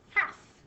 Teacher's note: a lot of people forget the silent L that goes in there. We don't hear that L at all when we say half. And the silent letter is almost halfway through the word.